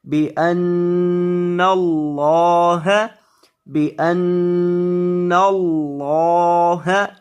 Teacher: یہ جو نون ہے نون مشدد اس کو آپ نے گنہ کرنا ہے. بِأَنَّ اللَّهَ اور یہ جو لفظ اللہ کلام ہے اسے پر کریں گے.